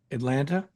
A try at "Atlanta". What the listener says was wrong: Atlanta. You pronounced the second T at the end. I was going to say that's how I know you're not from here because you say Atlanta.